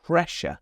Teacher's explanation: We have two s's there, but in this word, they're making a /ʃ/ sound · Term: sh sound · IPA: /ˈprɛʃə/